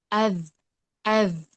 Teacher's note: tempat keluarnya yaitu di ujung lidah. Kita bisa merasakan hurufnya dengan sukun.